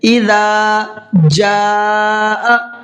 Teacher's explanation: اور یہاں پر دیکھیے یہ بڑا مد ہے، اس کو 4 سے 5 الف کی برابر کھینچ کر کے پڑھنا ہے